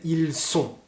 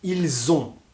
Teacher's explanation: on a un peu des difficultés à faire la différence entre son et z. On confond un peu les deux.